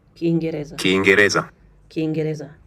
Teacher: Speaker stressed the next to last syllable. Reza. This is a common pattern in Swahili.